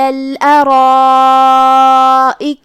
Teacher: جو کہ را پہ زبر ہے تو را کا حکم ہے تفخیم، ہمیں اسے بھاری آواز میں پڑھنا ہے